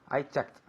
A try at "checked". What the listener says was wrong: Very good pronunciation.